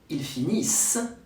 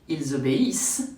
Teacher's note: If you don't say the S sound like in il finit or il obéit, I understand he instead of they.